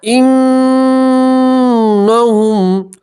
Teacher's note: نون کی آواز کو آپ 2 سیکنڈ کے لیے ناک میں روک کے رکھیں گے، تو اس سے گننا ادا ہوگا.